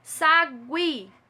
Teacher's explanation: É uma oxítona que tem aí na última sílaba um ditongo crescente, onde o I tem um som mais forte do que o U.